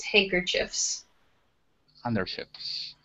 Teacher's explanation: Yeah. So it's kind of like the D is silent in handkerchiefs. More like H-A-N-K-E-R-C-H-I-E-F-S with no D.